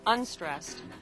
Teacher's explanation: in the word unstressed, un is stressed, and the rest of the word is not stressed